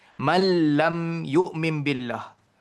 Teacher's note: Patutnya man lam tapi nun tu dimatikan terus, hilangkan terus. Lam itu mengambil alih tempat nun itu idgham.